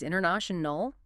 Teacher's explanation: In fast speech, the T often just disappears completely, replaced by that glottal stop or sometimes nothing at all.